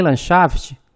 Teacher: temos a sequência NDX, também não se pronuncia D